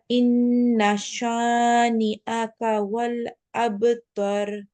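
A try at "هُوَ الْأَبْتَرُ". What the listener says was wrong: হুয়ার উচ্চারণটা আসে না। হু কই গেল?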